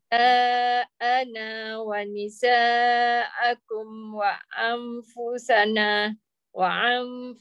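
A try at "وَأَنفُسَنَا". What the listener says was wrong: jangan wa'an nampak jelas sangat ain letak aje jangan tekan wa anfusana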